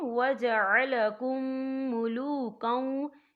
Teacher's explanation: میم ساکن کے بعد جو ہے میم مشدد حروف آ رہا ہے، تو یہاں پر ادغام شفوی ہوگا، ہم پچھلے میم کو اگلے میم میں مدغم کریں گے اور ہم یہاں غنہ بھی کریں گے، ٹھیک ہے۔